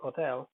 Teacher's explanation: Exception is hotel, in which e is stressed.